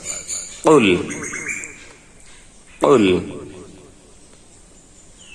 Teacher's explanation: কফ জিহ্বার গোড়া তার বরাবর উপরের তালুর সঙ্গে লাগিয়ে কফের উচ্চারণ হবে মাখরাজ। কুল কুল।